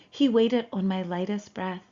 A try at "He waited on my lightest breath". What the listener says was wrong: I think she pronounced it as the stressed one, under the stress. Like he waited on my lightest breath. He waited on my lightest breath, and we have unstressed syllables here. Waited on and lightest breath.